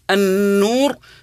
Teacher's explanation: نون مشدده تغن بمقدار حركتين النور لها الغنه بمقدار حركتين